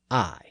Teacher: And of course, that sound is I, as in the name of the letter. Notice that the I sound is pronounced much further in the back of the mouth. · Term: long I sound